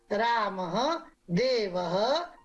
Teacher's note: अब अगला विसर्ग, इसका उच्चारण किंचित ह की तरह किया जाता है। इसका भी प्रयोग स्वर के बाद ही होता है, यथा रामः देवः गुरु।